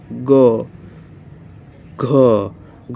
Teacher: जैसे ग को बोलेंगे ग, घ को बोलने से स्वर तंत्रों में कंपन उत्पन्न हो रहा है, झंकार उत्पन्न हो रहा है, झंकृत हो रही हैं। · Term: सघोष